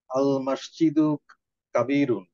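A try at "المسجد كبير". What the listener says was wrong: Very good.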